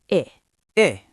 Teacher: Your jaw drops just a tiny bit, your face muscles relax, and the sound comes from slightly lower in your throat. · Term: short I